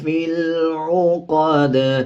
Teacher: قاف کو موٹا پڑھا جائے گا، اور جب وقف کریں گے تو دال پہ قلقلہ کریں گے، زیر کو سائلنٹ کر دیں گے۔